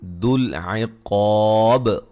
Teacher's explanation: مشدد پہ غنہ ضروری ہے، شدیدی ہے مدہ ہے. ذل عقاب قاف کو موٹا ادا کریں گے، الف مدہ ہے